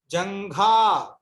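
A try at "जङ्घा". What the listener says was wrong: జంగా కాదు జంఘా.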